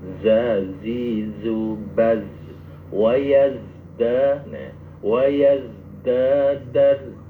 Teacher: misalkan makhrajnya za mengalir ya, za itu jadi desisnya agak ditekan